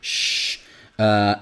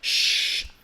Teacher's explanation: I think that the linguistic terminology would be an unvoiced palatal fricative. So unvoiced because your vocal cords are not vibrating. Shh. It's a palatal because you do it with a palatal of your mouth, and it's a fricative because it's made with friction, right? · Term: sh sound